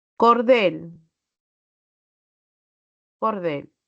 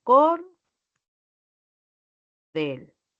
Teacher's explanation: tiene la mayor fuerza de voz en la última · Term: una palabra aguda